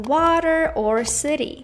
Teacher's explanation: when the letter T is between two vowel sounds it is often pronounced as the soft D sound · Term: the American T